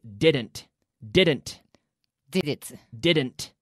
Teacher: with the D your tongue stays inside your mouth and touches the roof of your mouth it doesn't come out like a th sound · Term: strong D